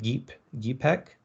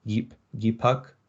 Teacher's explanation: a suffix that alternated between ek, which is a front vowel, and uk, which is a back vowel